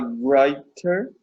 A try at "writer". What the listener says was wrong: Writer. Don't pronounce the W, just the R. Writer.